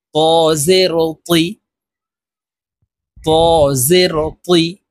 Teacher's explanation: ত হরফ আমরা মোটাভাবে উচ্চারণ করব, আর তা হরফ পাতলাভাবে উচ্চারণ করব। এখানে ত হরফ আছে, আমরা মোটা করে উচ্চারণ করব।